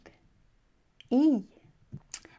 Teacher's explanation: Place the tip of your tongue behind your lower front teeth. The front of your tongue almost touches the ceiling of your mouth. Retract the corners of your mouth lastly.